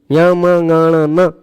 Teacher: ल भी है और य मनन ये है य म नन मुह और नाक दोनों से इनका उच्चारण होता इस कारण यह अनुनासिक है